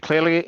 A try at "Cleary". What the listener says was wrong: Cleary. There is no second vowel in there.